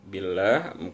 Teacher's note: Maka billah, maka lafzul jalalah atau Allah dibaca tipis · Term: tarqiq